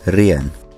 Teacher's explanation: the second vowel requires a diacritic so that we know to pronounce these as two separate vowels and not as one diphthong